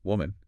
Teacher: The singular, woman, is produced with a rounded, heavy w sound in the first syllable.